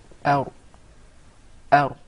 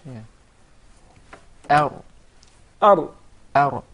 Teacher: You make sure that there is a slight striking, or the tip of the tongue would hit the gum to be pronounced properly without rolling or the repetition of the ra